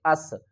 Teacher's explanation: سین کے اوپر سیٹی کی آواز آئے گی، حمزہ کو سین سے ملائیں گے، اس۔